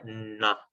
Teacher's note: NH es un sonido interdental. N interdental, ¿ya? Este sonido va a depender muchas veces de la vocal que venga posteriormente.